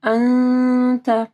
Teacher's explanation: انت نون ساکن کے بعد تا ہے، یہاں پہ اخفا غنہ ہوگا